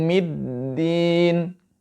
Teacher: huruf mim dibaca tipis keluarnya dari syafatain